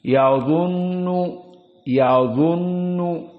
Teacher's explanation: Makna tafkhim di sini kita membaca mulutnya dalam keadaan penuh udara dan lisan ini cenderung naik ke atas